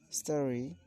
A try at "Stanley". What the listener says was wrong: You're kind of pronouncing this word as Stally, but the word is Stanley. Stanley. You're kind of pronouncing this word as Stally, but the word is Stanley.